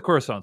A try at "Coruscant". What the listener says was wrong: Wait, are you pronouncing a hard C in the middle? Coruscant.